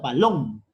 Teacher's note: es la última sílaba de la palabra balón por lo tanto cumple con ser aguda